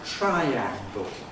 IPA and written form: ˈtraɪæŋgl̩ (triangle)